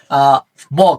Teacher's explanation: ব হচ্ছে অল্পপ্রাণ ঘোষ অল্পপ্রাণ ঘোষ